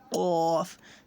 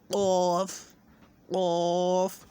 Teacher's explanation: قاف کو جہاں سے زبان کی جڑ ہے اس جڑ کو حلق سے لگانا ہے اور قاف ادا کرنا ہے، قاف، جہاں سے زبان کا جڑ شروع ہوتا ہے، قاف، قاف۔